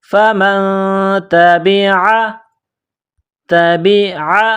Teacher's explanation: نون ساکن کے بعد تا ہے، حروف اخفا ہے تو یہاں آواز ناک میں چھپائیں گے، غنہ کریں گے